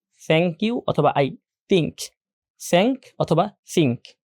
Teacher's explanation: টি এবং এইচ যখন উচ্চারণ করা হয় তখন দাত এবং জিউবা জিউবার যে আগা আছে সেটা দাঁতের সাথে লেগে যায়